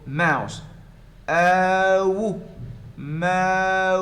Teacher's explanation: been pronounced as moose before they got the great vowel shift so the ooh has become ow again uh that's a diphthong · But ow, you have the A and then U as in put.